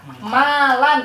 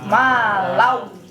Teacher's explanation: Maka dimasukkanlah tanwinnya ke dalam huruf waw. Yang tadinya malan jadi malau. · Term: idgham